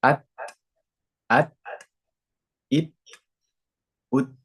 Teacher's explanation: Hamas itu nafas yang mengalir. Nah, sifat huruf ta ini sifatnya harus ada nafas yang mengalir. Nah, atau kita sebut di sini percikan nafas.